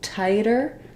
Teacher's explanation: I'm doing a voiced sound where my tongue goes up to the T and D spot, but it doesn't build up any pressure. · this flap that I use in tighter, it's just a light touch